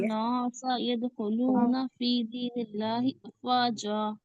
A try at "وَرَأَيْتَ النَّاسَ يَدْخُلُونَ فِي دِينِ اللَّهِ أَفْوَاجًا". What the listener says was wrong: دیکھیے نون کو باریک پڑھیں گے، نا سمپل جائے گا، نا سا. بہت اطمینان سے پڑھا کریے، کوئی جلدی نہیں ہے. دیکھیے ورأيت نو نہیں کرنا، نا سا، سیدھا سمپل، نون الف زبر نا سا، ٹھیک ہے؟ باریک.